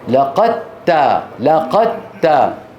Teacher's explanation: ندغم الدال في التاء فتصيران تاء مشددة